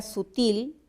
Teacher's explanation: la palabra sutil es aguda porque la sílaba tónica es la última